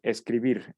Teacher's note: Escribir, sabemos que, pues, si lo dividimos en sílabas, la que pronunciamos con mayor intensidad es vir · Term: palabra aguda